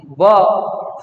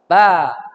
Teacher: Ba. Tipis. Maka jangan diangkat. Maksudnya suaranya jangan tebal.